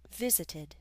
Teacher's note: in visit it's the first syllable that's stressed that's why we did not need to double the T visited